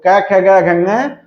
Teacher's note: और कंठ को स्पर्श करने के बाद क्या होता है कि वायु का मार्ग अवरोधित हो जाता है जिससे कंठ ध्वनियां उत्पन्न होती है